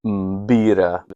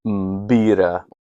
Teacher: So it's M, pi, and together that makes the plosive B sound.